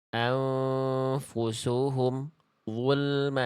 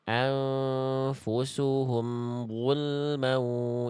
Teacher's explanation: Nah, itu bunyi ini nggak boleh putus. Karena mim punya sifat kayak ain namanya tawassut. Jadi suaranya harus sedikit mengalir, ya.